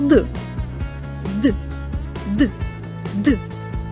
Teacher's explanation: що виходить з ротика зустрічає на своєму шляху перешкоду це язик звук д- дзвінкий бо наше горлечко тремтить при його вимові тобто голос працює